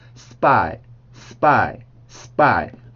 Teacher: 이 원래 발음들 P, T, K 발음들이 S 발음과 만나게 되면 B, T, K처럼 소리가 변하게 돼요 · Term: 된소리